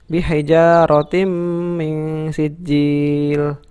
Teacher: Hukum bacaan di sini karena ada tanwin bertemu dengan mim, maka hukum bacaannya adalah idgham bi gunnah ya. Idgham bi gunnah. Cara membacanya dimasukkan dan mendengung.